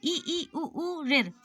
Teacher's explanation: तो ये हो गया संवृत, यानी सबसे कम मुंह खुलना